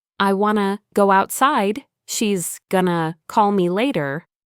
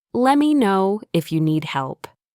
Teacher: In fluent English, words blend together. Instead of want to, you'll often hear wanna. Going to becomes gonna, and let me sounds like lemme. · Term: connected speech